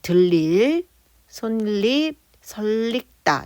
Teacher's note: 리을 받침 뒤에 첨가되는 니은 소리는 리을로 발음을 해요. 근데 얘는 리은이 첨가된 다음에 유마가 된 것뿐이지 리을 첨가라고 하는 건 없다는 거예요.